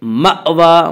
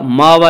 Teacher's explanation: المأوى جھٹکے کے ساتھ پڑھیں گے، مأوى ماوا نہیں پڑھیں گے